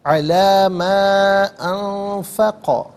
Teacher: انفقہ میں نون ساکن ہے، اور فا آپ دیکھیں ناظرین یہ حرف اخفا ہے، تو نون ساکن کو اخفا کے ساتھ پڑھیں گے۔ اخفا کہتے ہیں ناک میں آواز لے جا کر گنگنانا